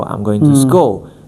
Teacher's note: So to has to be down there, and school has to go up. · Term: intonation